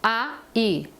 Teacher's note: juntos nós chamamos esse encontro vocálico de ditongo Lembrando que o o a é mais forte que o i o a vem primeiro o i vem depois